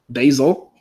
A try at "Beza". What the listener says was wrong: No, there's no L.